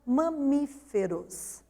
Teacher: 4 sílabas, sendo que a sílaba tônica recai sobre mi, portanto, é acentuada, porque é a antepenúltima sílaba dessa palavra.